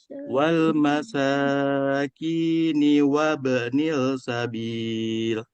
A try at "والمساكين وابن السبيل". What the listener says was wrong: وابن langsung terusin وابن Tadi sanya agak kepanjangan dikit ya. Coba disempurnakan lagi. Wal masa diayunkan. Wal masakini wal masakini wa ba'nis sabil.